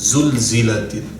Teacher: جو نارمل ہم زا کی آواز پڑھتے ہیں نا اردو میں بھی وہی والی ذرا سختی کے ساتھ